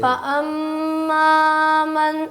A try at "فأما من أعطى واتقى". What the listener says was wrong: ماں یہ وہی ناک میں آواز آ رہی پھر ماں زیادہ ہو گیا نا. ماں نہیں ماں.